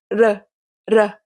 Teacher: Le deuxième son du portugais, le R légèrement roulé.